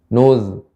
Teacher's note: zal ini merupakan huruf yang rokhawah, mengalir.